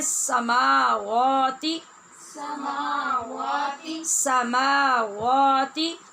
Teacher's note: ہم نے پڑھنا ہے سماواتی سماواتی واتی نہیں. ہونٹ گول رہیں گے اور واو ادا ہوگی. سماواتی. وا ایسے ہونٹ گھما کے کھول نہیں دینے کی آواز باریک ہو جائے.